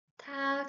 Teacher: it's stronger and it makes some air flow out